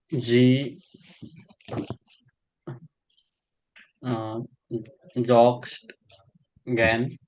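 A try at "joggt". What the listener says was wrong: jocked. Not no S.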